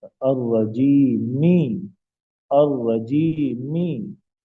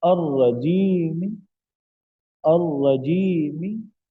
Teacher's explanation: یوں پڑھا جاتا ہے الرجیمی، الرجیمی، یہ پوری حرکت ہے می، جب ہم اس پہ روم کریں گے تو حرکت کا سب سے آخری جو حصہ ہے، بہت کم حصہ جو ہے جسے تہائی حصہ کہتے ہیں، وہ ادا کیا جائے گا ، تو یوں پڑھا جائے گا الرجیم، الرجیم، بالکل حرکت ہلکی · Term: وقف بالروم